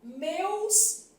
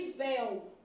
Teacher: Em meus, o E é fechado e em véu, o E é aberto.